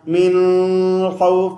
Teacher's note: نون کی آواز چلتی رہے, آواز بالکل بند نہ ہو. اگر بند ہو جائے گی بالکل من خوف, سکتہ ہو جائے گا.